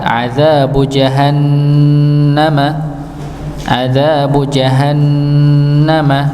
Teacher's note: Falahum adzabu, dzanya dibaca 2 harakat, adzabu jahannama sama, ada nun yang bertasydid ya, maka didengungkan